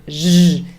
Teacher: And we need quite a lot of effort, I think, for zh. This is an unusual sound in English, that voiced zh sound, that voiced post-alveolar sound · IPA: /ʒ/